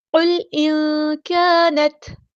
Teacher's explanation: الف مد آ گیا ہے تو ایک الف کے برابر لمبا کریں گے۔ ایک الف یعنی 2 حرکات یا 2 کاؤنٹس۔